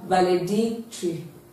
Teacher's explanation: So our answer is option B, which is D-I-C. So the stress is on dick.